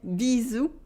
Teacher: Repeat after me, bisous, with a Z sound and a silent S